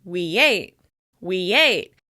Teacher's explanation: "We ate" becomes "weyate, weyate." In this case, we're linking with the /j/ sound. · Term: y sound